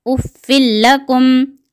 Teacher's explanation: بلا غنہ کے ملا کر پڑھیں گے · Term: ادغام بلا غنہ